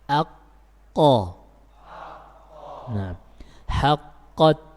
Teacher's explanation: qaf ini sifatnya syiddah. Jadi ketika kita mengucapkan huruf ini suaranya tertahan.